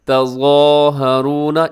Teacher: इसमें हर्फ़ ज़ा, इसे आपने मोटा करके पढ़ना है